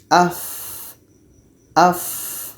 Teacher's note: Fa ini tempatnya pada perut bibir bawah, menempel dengan ujung gigi seri atas. Perut bibir bawah menempel dengan ujung gigi seri atas. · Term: rokhawah